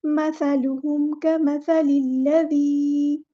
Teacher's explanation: کاف باریک ادا کرنا ہے، سا کو بھی باریک ادا کرنا ہے اور سیٹی نہیں آنی چاہیے